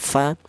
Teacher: berasal dari bibir bawah bagian dalam menyentuh ujung gigi seri atas ya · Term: huruf fa